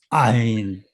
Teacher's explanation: 모음이 시작할 때 목에서 성대가 닫혔던 성대가 딱 열리는 순간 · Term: 후음